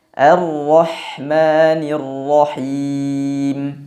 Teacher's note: bahwa pada pengucapan huruf H, nafas, angin, udara, suaranya mengalir dengan deras